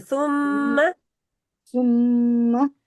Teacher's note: मीम को लंबा नहीं करना, अलिफ नहीं है इसके आगे